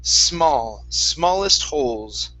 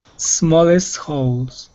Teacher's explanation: give me an unvoiced S at the beginning